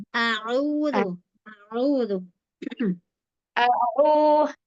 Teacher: A-nya jangan sampai diseret au. Kepanjangan langsung ya.